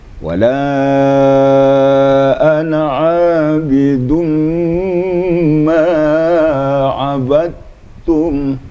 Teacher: Sedikit pun tak kedengaran huruf dalnya, qalqalahnya, kena langsung ke tasdid kepada ta ya.